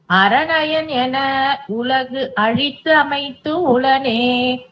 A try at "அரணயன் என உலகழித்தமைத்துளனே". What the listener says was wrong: பிரிச்சு பிரிச்சு சொல்லணும் இல்லமா. அரணயன் என உலகழித்தமைத்துளனே அந்த தூவா சேர்த்து சொல்லிடலாம்.